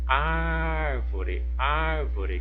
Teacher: Qual que é a sílaba mais forte o ar então o ar é a minha sílaba tônica